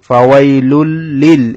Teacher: এই লাম যেহেতু তাসদীদ সেজন্য এই লামটা দুইবার উচ্চারণ হবে। · এখানে হচ্ছে ইদগামে বেলা গুন্না। তানউইনের পরে যদি লাম র আসে তখন সেটা ইদগামে বেলা গুন্না হবে, তানউইনটা লাম র মধ্যে প্রবেশ করে যাবে গুন্নাবিহীন। এখানে লামটা হচ্ছে ইদগামে বেলা গুন্নার হরফ।